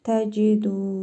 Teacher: Dəl hərfində isə hərfi məd var. Bir əlif miqdarı uzadırıq.